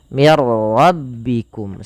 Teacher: Idgham itu memasukkan. Maka nunnya dimasukkan ke ra dan tidak boleh ditahan. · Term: idgham bila gunnah